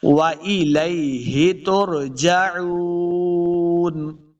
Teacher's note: عین پیش واو مدہ ہے، اس کو دو حرکات لمبا بھی کریں گے، آخر پہ ہم نے وقف کرنا ہے، وَإِلَيْهِ تُرْجَعُونَ۔